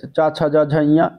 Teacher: चा वर्ग जो होता है ये उच्चारण जो होता है वो ताल से होता है। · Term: तालव्य व्यंजन